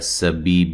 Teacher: سین کو باریک سیٹی سے ادا کرنا ہے